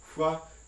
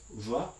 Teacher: many languages have bilabial fricatives, voiceless hua and voiced va